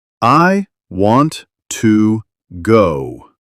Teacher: want and go are stronger. But to becomes softer, almost like t. This rhythm makes English sound smooth. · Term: English rhythm